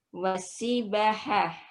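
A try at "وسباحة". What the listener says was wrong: Manjangin banyak.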